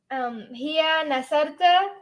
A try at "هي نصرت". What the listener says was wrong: You got the ta right. You're pronouncing it wrong. Hiya nasarat. And let's see if you don't say hiya nasarta. Hiya nasarat is what I want to hear.